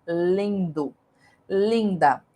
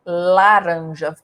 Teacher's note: o l quando ele é consoante ele tem esse som esse movimento el a língua vai lá pro céu da boca